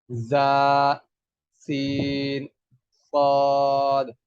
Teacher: اوپر اور نیچے والے دونوں دانتوں کے کناروں کو آپس میں ملائیں گے اور زبان کی نوک ہلکی سی درمیان میں لگانے سے سیٹی کی آواز سے یہ تینوں حروف ادا ہوتے ہیں۔